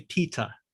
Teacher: i pronounce my t very clearly i don't pronounce the r at the end